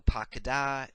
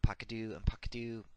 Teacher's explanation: when the affix is a vowel then the characteristic vowel in the second syllable the AH will reduce to a schwa